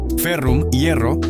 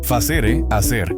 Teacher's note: La F se convierte en una aspiración H. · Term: H aspirada